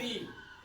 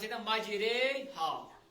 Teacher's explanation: री न पढ़ो राय न पढ़ो री बल्कि पढ़ो रे गो न बासन जबर हिंज आवाज न बासन जेर हिंज आवाज बल्कि दरमियानी हालत यानी दरमियानी आवाज जबर तो जेर सोया आवाज कड़न तो इमाला इमाला कर माइल